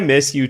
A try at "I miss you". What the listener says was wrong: the first time you said it, you had a bit of a more aggressive tone.